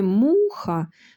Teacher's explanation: у слові муха наголошеним є перший склад му